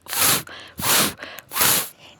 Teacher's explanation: En este sonido de la F obstruimos el aire poniendo el labio inferior debajo de los dientes superiores.